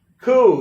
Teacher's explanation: They don't realize that they shouldn't pronounce the P. They might say like coop, like a pigeon coop or something.